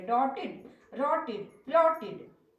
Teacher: If the ed is preceded by ट, it should be pronounced as voiced id